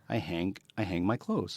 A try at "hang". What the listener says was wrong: No, you don't pronounce the G when you hang your clothes.